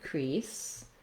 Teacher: the stressed syllable has a tense e sound